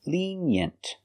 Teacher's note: Put the stress on the first syllable.